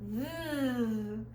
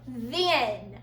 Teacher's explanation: the second sound that TH makes is a voiced sound, like in the word then.